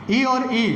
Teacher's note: ई और ई छोटे और बड़े दोनों का उच्चारण तालु से।